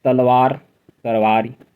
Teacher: अवधि में ल ध्वनि प्राय र हो जाती है कभी ल ध्वनि भी र हो जाती है ऐसे जैसे तलवार